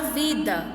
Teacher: Leia em voz alta a palavra vida. Perceba que a sílaba mais forte é vi. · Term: sílaba tônica